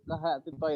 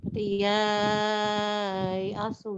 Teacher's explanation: Ketika ketemu dengan hamzah langsung dibaca 4 dan 6 harokat. Walaupun tidak diwakaf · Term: matlin berhamzah